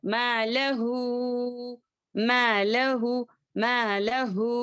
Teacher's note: ما میں 2 حرکات، لہو 4 حرکات · مد صلہ کبرا. اس کو 4 حرکات کے برابر ہم پڑھیں گے